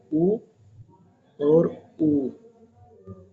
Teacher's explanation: ऊ और ऊ, इनका दोनों का ओष्ठ से हो गया